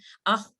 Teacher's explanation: आपकी back of the tongue up हो गई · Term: खा